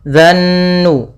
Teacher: Pada lafal fa idzan nujumu, lafal an-nujum, di sini ada alif lam syamsiyah, yaitu alif lam yang ditulis tapi tidak dibaca. Kita langsung pada lafal zal langsung ke nun